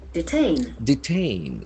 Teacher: The accent falls on second syllable.